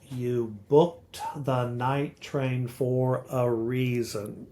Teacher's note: You see how she's accenting every other syllable. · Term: iambic meter